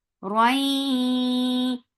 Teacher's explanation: So you're keeping the sound in your nose for a longer time because this idgham is with gunna. Roi. Yes, soft.